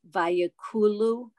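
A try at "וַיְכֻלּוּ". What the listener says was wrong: It's a chaf though. Vayachulu.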